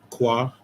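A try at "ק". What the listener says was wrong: kwa. It's not ka, it's kwa.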